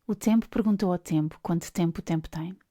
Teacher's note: The sound T is made with the tongue placed against the upper frontal teeth, whereas the sound P is a release of air after the lips were slightly pressed together. Something happens in the throat too, but unlike the vowels, it doesn't feel like singing, projecting sound with an open chest.